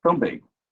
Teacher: O A é nasalizado e o M tem som de Y. Então, o M é uma semivogal.